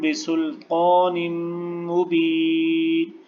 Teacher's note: آگے میم کے اوپر تشدید ہے تو لہٰذا نون کو میم کے ساتھ ملائیں گے